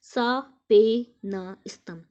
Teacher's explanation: We have here four long syllables suggesting how time drags on.